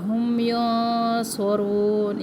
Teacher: اخفا جو ہے موٹی ہے، صاد موٹے حروف میں سے ہے، اخفا ہم موٹا کریں گے